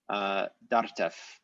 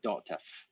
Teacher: So the R is lost, it becomes a glottal stop, and then the vowel changes to an O.